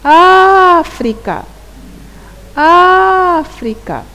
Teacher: É a sílaba A, não é? Porque é a que pronunciamos com maior intensidade. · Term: sílaba tônica